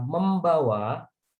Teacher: perubahan bunyinya adalah penambahan atau memunculkan fonem em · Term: morfofonemik